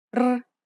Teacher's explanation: this is an R sound with a trill